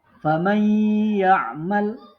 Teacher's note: mendengungkan bacaan dengan cara rongga hidung menahan dengungannya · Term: idgham bi gunnah